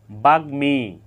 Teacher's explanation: জেনে নেই বাগমি এখানে গ এর সাথে ম ফালা যুক্ত হয়েছে গ এর সাথে ম ফালা যুক্ত হওয়ার কারণে এখানে ম ফলার উচ্চারণ অবিকৃত রয়েছে